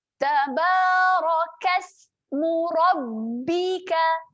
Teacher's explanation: Tahan pada huruf ba, ada tanda sabdu di atas huruf ba, tahan rapatkan bibir.